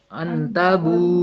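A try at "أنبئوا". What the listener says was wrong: بالکل ٹھیک ہے.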